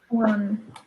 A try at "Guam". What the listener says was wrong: Guam. Guam with an M.